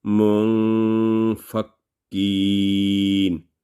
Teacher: So fa is not third letter, so there will be 2 second nasal sound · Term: Ikhfa rule